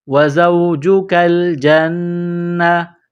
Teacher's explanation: نون زبر نا، جیم کو نون کے ساتھ پلس کرنا ہے، نون مشدد ہے تو آواز ناک میں چھپائیں گے، غنہ کریں گے